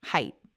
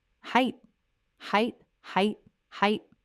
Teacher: The correct pronunciation is simply height, like the word kite or bite or quite, just height. No th at the end.